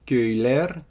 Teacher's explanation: Köy is village, and then plural, köyler, that's villages. You get the e suffix, or the ler version of the suffix because you have a front vowel ö. Doesn't matter that it's rounded.